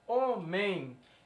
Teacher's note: então ele é um ditongo nasal